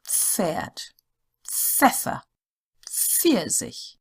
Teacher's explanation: as one sound so it's not pered it's so it's an F with a slight p in front of it